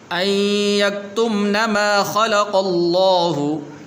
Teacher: لفظ اللہ کو پر کر کے پڑھیں گے